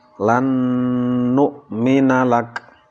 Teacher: Nun sukun, nun mati bertemu dengan nun, nunnya dimasukkan ke dalam nun yang kedua dan disertai dengan mendengung. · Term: idgham bi gunnah